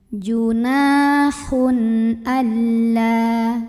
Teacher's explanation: Junahun, ada idhar halqi karena ada tanwin dhammah yang ketemu sama huruf hamzah maka tanwinnya ini dibunyikan dengan jelas masih bunyi dan tidak ditahan.